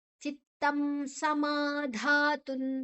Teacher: ಸಮ ಮಾ ದೀರ್ಘಾಕ್ಷರ ಧಾ ದೀರ್ಘಾಕ್ಷರ